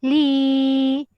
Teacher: Berlaku hukum mad asli ya dibaca panjang, 2 harokat.